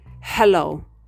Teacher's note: in the glottis which is the middle part of the larynx there's a slight friction in the vocal cords and the air is pushed through the Mouth